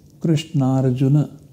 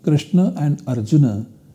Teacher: where A and A are substituted by their long version A